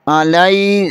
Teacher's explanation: حمزہ کے اوپر زبر ہے، لام زبر یا لئی، لام کے آگے یا ساکن ہے، یہاں پر یا لین ہوگا